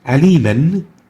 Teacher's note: The second associated med with the natural is the substitute med, and the substitute med happens when we stop on a tanween with a fatha. The tanween would be substituted with a lengthened alif.